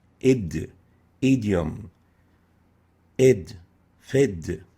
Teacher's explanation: The dal articulation point occurs as the tongue is raised to touch the alveolar hard palate.